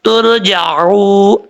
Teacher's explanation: واو مدہ ہے، ایک الف کی مقدار اس کو لمبا کر کے پڑھیں گے